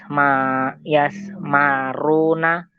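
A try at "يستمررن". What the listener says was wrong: Yasmarirna. Jadi bukan marorna. Ro pertamanya kasroh. Karena yasmaru, ya, itu kan asalnya yasmariru. Yasmaru, ya. Itu asalnya yasmariru.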